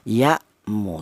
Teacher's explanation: Jelas bahwa huruf hamzah ini yaitu keluarnya berasal dari pangkal tenggorokan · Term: idhar